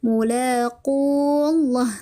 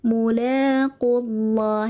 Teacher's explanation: Maka solusinya adalah dengan dibuang digugurkan. atau dihilangkan madnya yang awalnya ini qof-nya dipanjangkan, kita langsung saja di idghamkan kepada lafaz Allah. Jadi dihilangkan madnya ya mulaqullah.